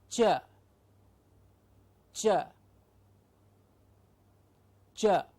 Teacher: Exactly, it's a palatoalveolar sound, meaning that the tip or the blade of the tongue and the teeth ridge come together to give us the ch · Now, ch is a palatoalveolar sound.